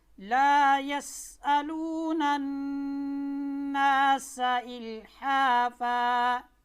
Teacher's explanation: سین زبان کی نوک ثنائے سفلیہ کے کنارے، ثنائے سفلیہ یعنی نیچے والے سامنے والے دو دانت، اس کے کنارے اور ثنائے علیہ کے ساتھ لگ کر حرف سین ادا ہوتا ہے، اور جب بھی آپ نے اس کو ادا کرنا ہے سیٹی بجانی ہے۔